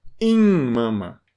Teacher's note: Esse I não é parecido com o I de té. É um I nasal.